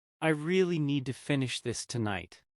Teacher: The important beats might be really, need, finish tonight. The little words can become much weaker. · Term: rhythm